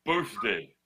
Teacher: you got a th in the middle but it makes a f sound